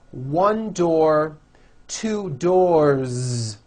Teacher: 1 door, 2 doors, with a voiced Z ending